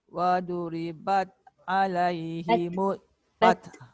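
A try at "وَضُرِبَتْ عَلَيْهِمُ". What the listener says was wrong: Jangan te. Te tu suara. Bat.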